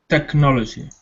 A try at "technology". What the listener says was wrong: Okay, because I wasn't hearing the k in technology. Technology.